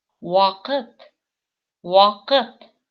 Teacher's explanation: опять-таки А говорится как О немножечко, и буковка К говорится очень твердо, как будто с твердым знаком К. Потому что после нее идет твердый звук гласный И.